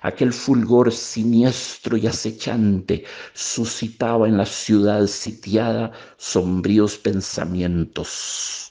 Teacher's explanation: Vean, por ejemplo, al final del segundo párrafo se trata de evocar el sigilo, el acecho, el espionaje, el estado de sitio en que está la ciudad. El traductor escoge muy astutamente la S sibilante para crear una sensación de suspenso